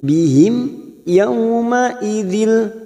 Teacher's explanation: mim sukun yang bertemu ya maka dibaca jelas tanpa mendengung